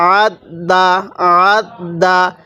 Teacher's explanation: এরপরে আইন লাগবে এই দালের সাথে আত, দাল জবর দা, আত দা, আত দা। আইনটা গলার মধ্যে একটু চাপ দিয়ে পড়লে আইনটা সহি উচ্চারণ হয়। তাহলে আইন দাল জবর আত, দাল জবর দা, আত দা, আত দা।